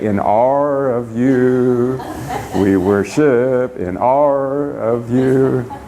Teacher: You have an ah sound, but you add an R to it.